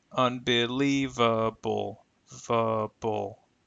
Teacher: Even though the primary stress is on li in the middle, the secondary stress is on the letters UN, represented by this particular symbol here. But notice the schwa is used for the last two vowel sounds.